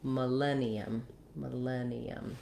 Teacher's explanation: in our stressed syllable len that's where i'm going to be long i'm going to hold that len with a clear vowel i have a tense e and then another schwa sound millennium · So our letter I is going to say a short reduced I, or even a reduced schwa. I'm going to write that like this, ma. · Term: second syllable stress